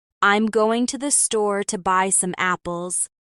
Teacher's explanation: The stress is on store and apples.